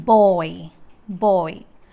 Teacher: For RP oi, the tongue glide begins at a point between back, half open and open positions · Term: diphthong